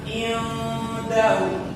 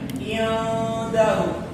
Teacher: nun mati ketemu dal, maka cara membaca nunnya di sini itu diikhfakan, disamar-samarkan.